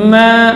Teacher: Kalau sekarang ini huruf mim, kalau mim lebih ringan, ma, itu ya, dari dua bibir bagian dalamnya